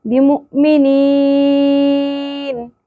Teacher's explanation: या साकिन हर्फ मद्दा है, नून की ज़बर जज़म में बदल जाएगी, आयत मुकम्मल होने और वक्फ की सूरत में नून साकिन हो जाएगा।